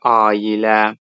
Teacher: Burada ai birləşməsinin arasına y samiti artırılıb.